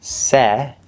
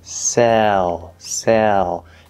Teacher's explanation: that half L vowel sound actually colors the third vowel E, we call it an L-colored vowel, and so it's going to sound a little different.